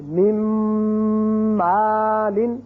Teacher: تیسرا حرف ہے میم. یعنی جب نون ساکن کے بعد میم آئے تو اس کو بھی غنہ کریں گے